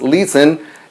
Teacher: es un verbo de dos sílabas, listen, la última sílaba no es acentuada